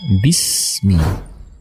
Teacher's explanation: huruf Sin ini keluar dengan meletakkan ujung lidah paling depan pada dinding dua jenis dari bawah sehingga suara keluar diantara gigi